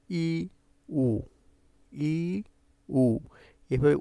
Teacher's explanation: তাহলে তোমার জীববার অবস্থানটা তোমার এই মুখের ভেতরে অনেক উপরে হবে